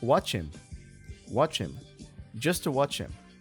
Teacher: the CH from watch is linked to the following vowel